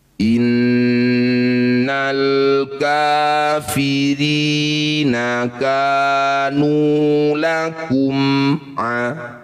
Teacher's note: Inna nun bertasydid disebut bacaan ghunah musyaddadah. Bunyi nun dengungkan dua harakat.